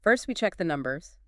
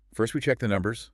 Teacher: You keep your voice sort of hovering, just slightly up at the end of each chunk. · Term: continuing pattern